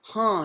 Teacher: Us women say, huh, it's really nasalized.